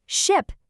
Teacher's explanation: you don't hear the standard S sound anymore, and you don't hear the H breathiness either? The handshake has created a completely new, unified sound.